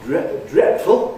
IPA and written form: ˋdretfl̩ (dreadful)